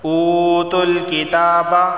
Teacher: واو سے پہلے پیش ہے تو اسے بھی 1 الف کے برابر کھینچ کر پڑھا جائے گا